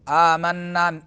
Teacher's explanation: نون مشدد ہے تو غنہ زمانی ہوگا